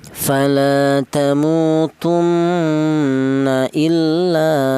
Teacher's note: ada nun yang bertasdid. Ini dibaca ghunah